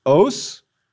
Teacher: The accusative for the masculine is a long O, followed by S, os.